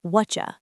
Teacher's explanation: When spoken naturally, the T in what and the Y in you blend together to make a CH sound.